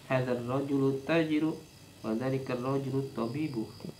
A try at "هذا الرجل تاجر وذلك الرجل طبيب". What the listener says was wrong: Haknya dipanjangin. Hadzal rajulu tajirun. Nah, wa dzanya dipanjangin.